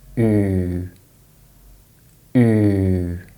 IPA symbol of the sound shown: u: